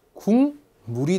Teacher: 자, 역시 이응으로 변했습니다. 비음이 아니었던 기억이 비음으로 변했죠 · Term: 비음화